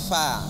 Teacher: gigi siri atas dengan bibir bawah bagian dalam, bukan dengan bibir bagian luar ataupun bibir atas dengan bibir bawah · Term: huruf fa